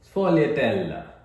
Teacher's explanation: Want to stress on the T syllable.